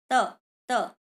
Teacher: आपकी जो अंदर से आने वाली हवा है वो दांतों पर टकरा रही है, तो इसलिए इसका उच्चारण स्थान हो जाएगा दंत।